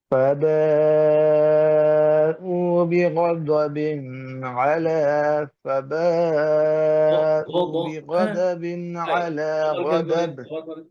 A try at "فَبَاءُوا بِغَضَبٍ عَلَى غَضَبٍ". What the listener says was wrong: হ্যাঁ, মাদ নাই কিন্তু। হ্যাঁ, জবরের পরে আলিফ থাকে, ফাতহা বিফর আলিফ, কাসরা বিফর ইয়া, দমা বিফর রা, এই মাদ। এর বাইরে কোনো মাদ নাই। فباءوا بغضب على غضب, এখানে গুণনা নাই কিন্তু, বিগদাবিন আলা।